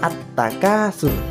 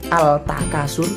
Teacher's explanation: Alif Lam dihilangkan secara bacaan kita masukkan kita idghomkan kepada huruf tak atau alif lam kita lebur secara bacaan dan yang kelihatan adalah huruf tagnya jadi bacanya at-takasur ndak boleh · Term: al-syamsiah, asyamsiyah, bacaan asyamsiyah